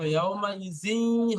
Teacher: এই জাল তানবিনটা গিয়ে ইয়ার সাথে যোগ হবে এবং একাধিক পরিমাণ গুণা হবে। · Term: ঈদগামে নাকিস